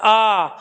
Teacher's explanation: जब आ कह रहे हैं तो जीभ आती है पीछे से निकल के और वो ऊपर को उठती है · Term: पश्च स्वर